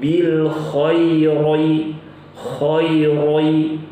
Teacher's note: membaca tebal huruf ro yang berharakat kasrah